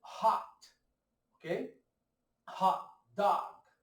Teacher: o som O aberto, né? Parecendo o nosso O do português com acento agudo. Meio O, um pouquinho pro A